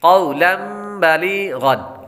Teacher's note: या के बाद गईन हरूफ मुस्तालिया में से है, इसलिए इसको पुर पढ़ेंगे।